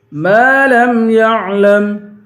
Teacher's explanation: میم کو ایک الف کی مقدار کھینچیں گے، میم حروف مدہ ہے.